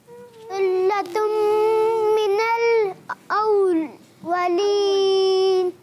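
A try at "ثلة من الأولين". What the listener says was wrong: ماشاء اللہ کوشش کریں کہ رکے نہیں ایک ہی انداز سے. ثلة من الأولین. پھر رک جاتے ہیں تھوڑا اسٹاپ رکھ جاتے ہیں بریک لگ جاتے ہیں.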